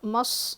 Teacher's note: قاف کو موٹا پڑھیں گے، وَنَمَارِقُ، دیکھیے میم صاد زبر مس، صاد موٹا پڑھیں گے، حروف مستعلیہ